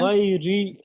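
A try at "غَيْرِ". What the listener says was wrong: ইয়া মাদ্দা টান দিয়ে পড়তে হবে, লিন টান হবে না। আওয়াজে তাড়াতাড়ি পড়তে হয়।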